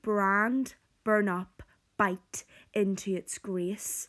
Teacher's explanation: That is plosive alliteration, the b sound, quite aggressive and harsh.